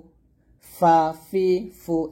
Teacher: যখন আপনি ফা টা উচ্চারণ করবেন অবশ্যই বাতাস বের করতে হবে বাতাস বের করেই উচ্চারণ করতে হবে এরকম পাতলা করে